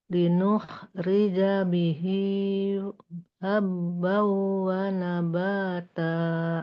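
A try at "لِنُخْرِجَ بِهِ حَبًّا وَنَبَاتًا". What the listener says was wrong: Linukhrija bihi habban, ha dimaksimalkan lagi. Habban wa nabata.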